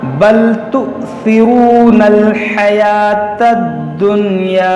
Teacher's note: یہاں پر حمزہ ساکنہ ہے, اس کو جھٹکا دے کر پڑھیں گے